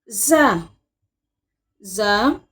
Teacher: اوپر اور نیچے کے دانتوں کو ملا کر جب زبان کی نوک نیچے کی دانتوں سے ملے، پھر زا ادا ہوتا ہے